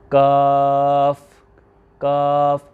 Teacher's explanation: وہ کیا ہے کہ تالو کا سخت حصہ، اس میں زبان کی جڑ نہیں اٹھانی۔ کیوں کہ یہ حروف مستعلیہ میں شامل ہی نہیں ہے، اس لیے ہم نے اس کاف کو کیا کرنا ہے، باریک کرنا ہے۔